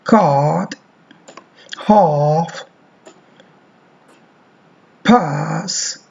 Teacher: this is an open vowel in the region of cardinal vowel number five show vowel are but not as back as this the ellip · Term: long vowel